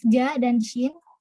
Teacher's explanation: Dihasilkan dari penekanan daun lidah atau artikulator aktif pada langit-langit keras, artikulator pasif. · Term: frontopalatal